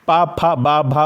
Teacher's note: पा, फा, बा, भा बोलते हैं, बिना होठ की मदद से आप नहीं बोल सकते। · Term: ओष्ठ